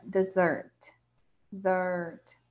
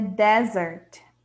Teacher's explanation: Então, a tônica é a segunda parte da palavra, né?